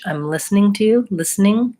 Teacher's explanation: In rapid speech, I'm listening to you, listening. I would reduce it down to 2 syllables and no schwa.